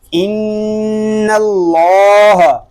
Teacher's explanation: نون مشدد میں ہمیشہ غنہ ہوتا ہے، اور اللہ پاک کا لام اس لیے پر ہے کہ اللہ پاک کے لام سے پہلے حرف پر زبر آ گیا ہے۔